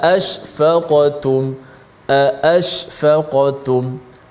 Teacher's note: Mesti bunyi hamzah di tempatnya. Dan hamzah ada sifat yang suara tertahan.